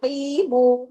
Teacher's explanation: قاف کو ہیوی کیجئے، 2 حرکات کھینچیے